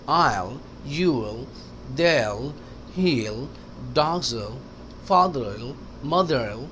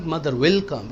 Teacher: will कहने का ज़रूरत नहीं है, मिला दें।